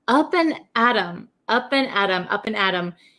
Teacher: This T sound becomes a flap T, which sounds like a D. So many Americans write, I'll write it here, up and Adam.